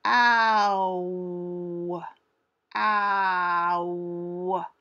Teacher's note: If you slow down the ow sound, ow, ow, you can hear it has two parts to the sound.